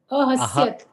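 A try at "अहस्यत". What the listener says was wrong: Ahasyata. Ta. Full ta.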